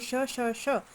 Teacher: जीभ मुख्य अवयव के पास तो चली जाती है दोस्तों, लेकिन स्पर्श नहीं होता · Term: ऊष्म वर्ण